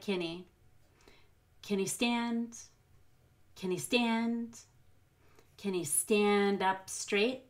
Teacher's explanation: the can he at the very beginning is gonna be very fast it'll sound like Kenny